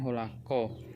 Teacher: Bunyi N pada kata holan dan bunyi H pada kata ho saling disesuaikan atau diasimilasikan menjadi bunyi K.